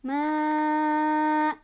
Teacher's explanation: Dal itu awalnya domah barisnya, karena berhenti karena wakaf maka dia jadi sukun. Cara bacanya pantul dan dipantulannya besar. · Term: qalqalah kubro